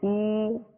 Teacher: واو مدہ ایک الف کی مقدار میں اس کو کھینچ کر ادا کریں گے